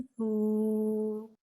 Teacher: پیش کو ہونٹوں کی گلائی کے ساتھ ادا کریں گے